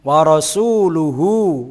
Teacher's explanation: wa ra tafkhim karena ra berharokat fathah